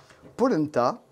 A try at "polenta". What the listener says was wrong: Tu l'as prononcé à l'allemand de Polenta. Je sais pas, Polenta non.